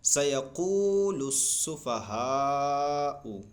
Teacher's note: قاف کو کھینچ کر پڑھیں گے، کیونکہ قاف پر پیش ہے اور پیش کے بعد واو آ رہا ہے۔ جب بھی پیش کے بعد واو آئے گا تو پیش کو کھینچ کر پڑھتے ہیں، تو اس لیے یہاں پر اس کو کھینچ کر پڑھیں گے۔